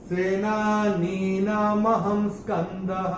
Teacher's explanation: और तीसरे चरण की समाप्ति पे विसर्ग चरण की समाप्ति पे आ रहा है तो इसका उच्चारण केवल और केवल ह ही होगा।